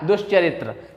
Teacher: यहाँ पे क्या है, दंती सा है और दंती सा के बाद चवर्ग का योग है इसीलिए यह दंती सा मूर्धन्य सा में बदल गया